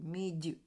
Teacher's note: мідь тільки він не м'який а пом'якшений тому що це губне губний приголосний м тому пом'якшений